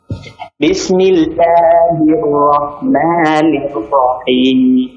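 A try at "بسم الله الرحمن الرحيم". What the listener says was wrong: Baik, fathahnya luruskan.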